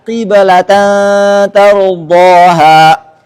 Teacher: Jika sebelumnya berharakat kasrah, maka bunyi qalqalah lebih dekat ke kasrah.